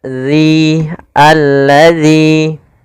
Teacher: Pada lafal zal makhrajnya harus tepat, yaitu ujung lidah kita, ujung lidah menempel dengan gigi seri atas agar sempurna bunyi bacaannya